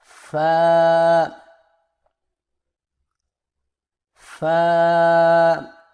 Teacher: سامنے والے اوپر کے دو دانتوں کے سروں کو نچلے ہونٹ کے گیلے حصے پر لگا کر باریک آواز میں پڑھیں